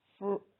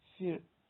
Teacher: there is no vowel between the two consonants. So they have to be pronounced together as fr rather than fir. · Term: consonant clusters